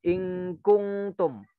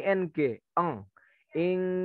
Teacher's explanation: ketika baca ingkungtum, nun sukun bertemu dengan kaf, itu hurufnya murni ng